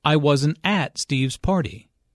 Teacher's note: Notice that the emphasis here is on at. Although prepositions normally have weak stress, in this case at means there.